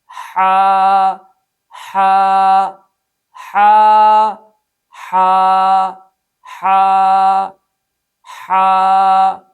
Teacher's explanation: اس حرف میں 1 الف کے برابر مد اصلی ہے